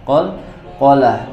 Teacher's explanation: maka huruf qnya harus dipantulkan